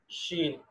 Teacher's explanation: اور شین حروف تفشی میں سے ہے، یعنی اس کے ادائیگی کے وقت آواز پوری منہ کے اندر پھیل جاتی ہے، تو یہ آواز بھی پھیلنی چاہیے، آواز پھیلے.